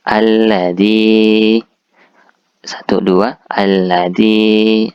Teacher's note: dibaca agak panjang 2 harakat atau 2 ketukan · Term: mat tabi'i